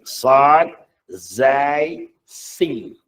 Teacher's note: Sifat pertama dia Safir. Bahasa Melayunya dikatakan deseran angin.